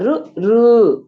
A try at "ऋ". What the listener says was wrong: And when you say, don't bring the ukara there. It's not ru. r.